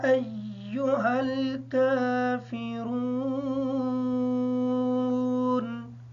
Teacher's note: قاف کو پر پڑھیں گے، یا کے مد کو مکمل کریں گے، حمزہ کے ساتھ یا کو اچھے طریقے سے ملا کے پڑھیں گے تاکہ یہ شد ادا ہو جائے۔ کاف کو باریک پڑھیں گے اور را کو پر پڑھیں گے، نون حالت وقف کی وجہ سے ساکن ہوگی۔